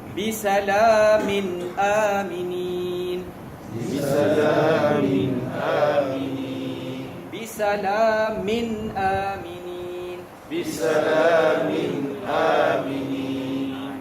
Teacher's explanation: lepas tanwin bertemu dengan hamzah, dia tak boleh dengung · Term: izhar